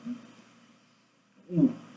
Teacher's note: Esse é o U arredondado. O que é um U arredondado? Com o biquinho.